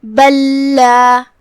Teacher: دونوں حرف کی ادائیگی ایک ہی جگہ سے کیونکہ وہ دونوں ایک ہی حرف ہے تو ہم پہلے لام کو دوسرے لام میں داخل کر کے ایک ہی لام پڑھیں گے تشدید کے ساتھ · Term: ادغام متماثلین